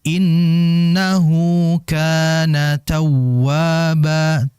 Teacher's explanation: sedikit dihentak di wawnya.